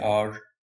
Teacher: The word hour starts with the vowel sound a, even though its first letter h is not a vowel